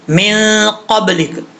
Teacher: من قبلک، قاف کے بعد جو با ہے، اچھا قاف جو ہے حروف مصالحہ میں سے ہے، پر پڑھا جائے گا. اس کا مخرج ہے زبان کی جڑ اوپر والے تالو کے نرم حصے سے لگے تو قاف پڑھا جاتا ہے